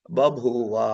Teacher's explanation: భూవ అవ్వాలి కానీ మనం ఏం చేశం ఈ రెండు భౌవ అంటే కష్టంఅని మొదటి భాని మహాప్రాణాన్ని అల్పప్రాణం చేసి బభువ అన్నాం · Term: అల్ప ప్రాణీకరణం